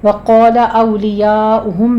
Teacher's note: فتح قائمہ کے بعد حمزہ اسی کلمے میں ہے تو مد متصل واجب 5 کاؤنٹ کریں گے ہم